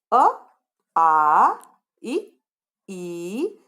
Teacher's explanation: मैंने ह्रस्व स्वर को बोलते समय कम समय लिया और दीर्घ स्वर को बोलते समय ज्यादा